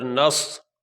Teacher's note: اس نون کو اس صاد کے ساتھ ملا کے سختی سے ادا کیا جائے گا۔